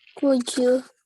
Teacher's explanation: Jadi kita menyambung bunyi D dengan Y. Bunyinya jadi J. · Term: connect the sound